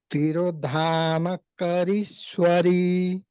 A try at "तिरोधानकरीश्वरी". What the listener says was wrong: This re, no, you should elongate.